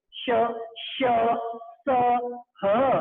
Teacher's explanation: ध्वनि घर्षण के साथ यानी टकराती हुई एक ऊष्मा बाहर की तरफ देती है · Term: ऊष्म व्यंजन